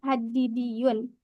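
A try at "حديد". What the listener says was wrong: Hadi panjang ya. Hadidiyun. Enggak pakai tasdid. Hadid. Jangan ditasdidkan dalnya.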